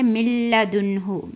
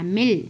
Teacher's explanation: یہ کیا ہے، من لدنہ، من لدنہ نہیں پڑھنا، مل، میم کو ڈائریکٹ لام میں ملانا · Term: ادغام لام